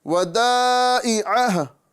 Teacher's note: ہا کو ہم ساکن کریں گے تو عین کے بعد ہا کی آواز آئیں گی، اور اگر ساکن نہیں کریں گے تو ہو ایک الف کے برابر کھینچ کر پڑھیں گے۔